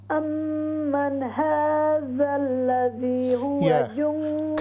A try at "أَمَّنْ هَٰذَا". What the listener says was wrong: You see, at the start we don't say man na. There's no kalkala in noon.